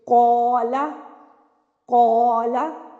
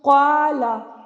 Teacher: اگر آپ اس کو پڑھ لیں گے قالا، اب آپ نے قاف کو تو پر کر دیا، الف کو پر نہیں کیا تو یہ رانگ ہو جائے گا۔ قولا، قو، اب قاف بھی پر ادا ہو رہا ہے اور الف بھی پر ادا ہو رہا ہے، کیوں؟ قاف حروف متعلیہ میں سے ہے نا، اسی لیے الف بھی اس کا پر ہوگا۔